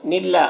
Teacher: اللہ کو باریک پڑھیں گے اور کھڑا زبر ہے تو ایک الف کے برابر کھینچیں گے